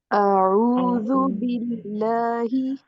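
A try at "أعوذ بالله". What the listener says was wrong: ہاں دیکھیں اس میں جو آئین پڑھا جا رہا ہے نا وہ حمزہ کے ساتھ مرج کر کے پڑھیں. اعوذ باللہ.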